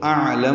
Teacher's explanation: اعلم میں حمزہ اقصی حلق سے، عین وسط حلق سے ادا کریں گے ، لام باریک ہے، میم کو معروف طریقے سے پڑھیں گے